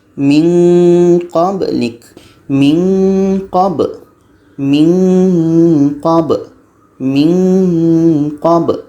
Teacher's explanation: Ketika sebut huruf nun kita sudah merasakan huruf qa.